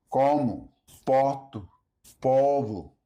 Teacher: Next, let's look at unstressed O. Unstressed O often sounds closer to a U sound.